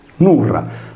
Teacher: con la consonante R rafforzata nel suono